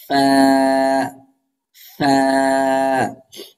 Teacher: ফা জারি থাকবে মানে বাতাস চালু থাকবে।